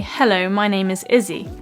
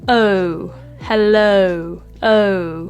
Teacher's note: the O at the end of hello is actually a diphthong which essentially means that there are two sounds to the vowel that slide together